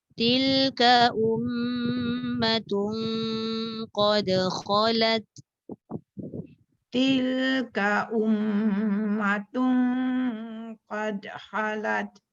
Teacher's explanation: Dengung 2 harakat, tun pun dengung.